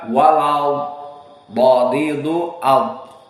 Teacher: Maka makhraj huruf dari dha bukan dari depan lisan, tetapi hafatay lisan, di samping. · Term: makhraj dha